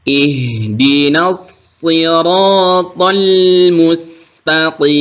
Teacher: lam sukun tidak ditekan tidak ngeget tidak dipantulkan ihdin mustaqim jangan sampai TH atal jangan sampai dipantulkan mustaqim nah